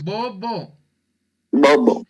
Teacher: Si ustedes dicen la palabra bobo, ven que se van a juntar sus labios. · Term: B bilabial